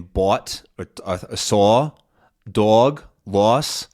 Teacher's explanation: It sort of starts tight and closed and it almost like relaxes